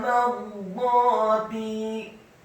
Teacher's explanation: Kata mardati, mimnya dibaca fathah 1 harokat, kemudian ra-nya dibaca sukun, dibaca tebal dan isti'la, tafkhim dan isti'la, dibaca bergetar dan tebal